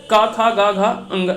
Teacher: अगर जब भी क वर्ग का बात करें तो वो कंठ से होता है। कहाँ से होता है, कंठ से होता है।